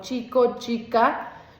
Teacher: fricción y su sonido es continuo. Y finalmente, la fricada si existe un bloqueo de aire solamente al inicio y el aire con fricción se da pero al final y el sonido que se genera es explosivo pero continuo a